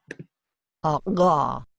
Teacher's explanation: Ga. O la uvular, que en la úvula, en la campanita atrás